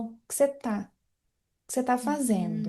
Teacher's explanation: O que você está fazendo. No dia a dia, por causa da redução das palavras, o que você está ficaria como o que você tá fazendo.